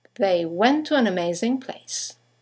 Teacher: you have the semi-vowel W that connects the vowels to and an to each other